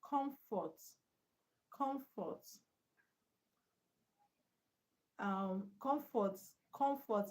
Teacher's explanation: So comfort is a noun. The stress on the first syllable.